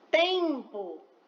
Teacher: Nós escutamos o som do e apenas, nasalizado. Porém, na escrita, nós temos que colocar o M, porque o M representa o som nasal, tá?